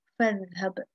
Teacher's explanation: This Hamza is not pronounced when it is preceded by a letter. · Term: connecting Hamza